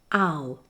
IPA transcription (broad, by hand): aʊ